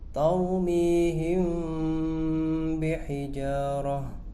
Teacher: Cara membacanya harus samar, seperti dengung. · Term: ikhfa syafawi